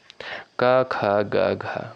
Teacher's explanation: क वर्ग के अंतर्गत जो भी वर्ड आते हैं आपके वो कहाँ से उच्चारित होते हैं? कंठ से उच्चारित होते हैं